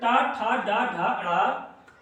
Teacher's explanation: यानी टा वर्ग का उच्चारण जो हमारा है मूर्धा से होता है, इसलिए इनको हम क्या कहेंगे, मूर्धन्य वर्ण भी कहते हैं।